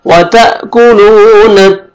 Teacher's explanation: वाव मद्दा है, लाम को आपने 1 अलिफ के बराबर खींचना है, व त कुलून।